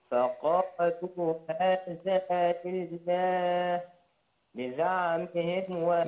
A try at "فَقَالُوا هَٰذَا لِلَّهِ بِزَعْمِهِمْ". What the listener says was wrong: لا أقول هذا لله بزعمهم، ما تقطعهاش.